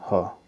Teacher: ह क्या है घोष महाप्राण दोनों है